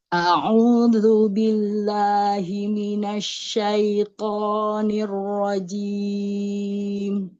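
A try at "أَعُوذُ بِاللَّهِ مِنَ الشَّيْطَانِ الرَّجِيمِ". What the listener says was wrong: Toknya jaharkan lagi, jangan ada nafas. Asyaito.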